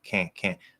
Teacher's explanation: when you nasalize that ah you don't have to go up into n anymore and you don't even have to push out the t or · and instead of doing the n you can do k ah make the a nasal like fully nasal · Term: full on nasal